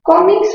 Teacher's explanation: Cómics, mayor fuerza en co. Es una palabra grave terminada en S.